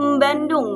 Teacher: pada fonem awalnya yaitu fonem B, mereka menambahkan bunyi sengau huruf atau fonem M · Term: interferensi fonologi